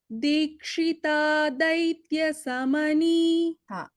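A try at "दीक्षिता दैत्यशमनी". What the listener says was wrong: So it is not Samani, it is Shamani. Dikshita Daitya Shamani. Shamani. Shankara as in Shiva. When we say Shiva, Shamani.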